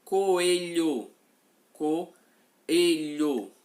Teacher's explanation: O O e o E pertencem a sílabas diferentes quando pronunciados. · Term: hiato